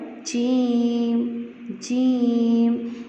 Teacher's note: جیم زبان کا درمیان جب تالو کے درمیان سے لگے تو جیم ادا ہوگا